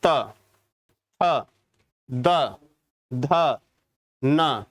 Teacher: आपकी जीभ जो है दांतों के बीच में आ रही है